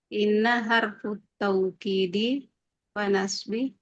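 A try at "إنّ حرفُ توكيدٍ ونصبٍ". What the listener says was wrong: Nah, ditanwin. Harfu taukidin wa nasbin.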